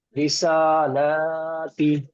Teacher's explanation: और सीन का ऊपर खड़ा जबर अलिफ मद्दा का बराबर है, एक अलिफ टान के पढ़ना चाहिए।